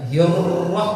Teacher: Naik ke pangkal lisannya. Ujung lisan tetap di dekat gigi tapi tidak nempel. Ujung lisan di gusi gigi tapi tidak nempel.